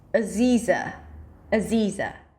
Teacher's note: place the primary stress on the second syllable, Z, which has to be a long E sound, so pull your lips to the sides, and then just reduce the beginning and ending syllables.